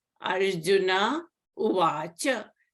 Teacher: Now this is the Visarga, Arjunaha. So the Visarga after sandhi is Arjuna Uvacha. So the Visarga is dropped. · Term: Visarga sandhi